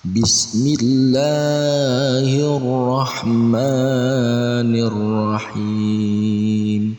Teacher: Nah, huruf ra ini adalah huruf syamsiah, maka alif lamnya tidak terbaca tapi langsung dibaca ra berharokat tasdid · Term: alif lam syamsiah